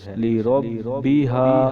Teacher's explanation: با کو ہم 2 بار پڑھیں گے، اس کے اوپر تشدید ہے